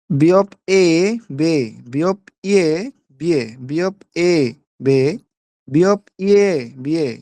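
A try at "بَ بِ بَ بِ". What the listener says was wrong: এই চারটা আপনার সেম হয়ে গেছে, প্রথম দুইটা কিন্তু চাপ দিয়ে পড়তে হবে, পরের দুইটা হালকা ভাবে পড়তে হবে,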